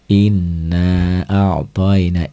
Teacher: ini mad jaiz munfasil ini 2 sampai 5 harokat atau 1 sampai 2,5 alif. Dibaca 5 harokat juga boleh, nggak ada masalah.